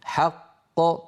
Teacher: لاحظوا بأن القلقلة للقاف الثانية وليست للقاف الأولى المدغمة. حق هذه قاف مدغمة، ق هذه هي القاف الثانية المقلقلة.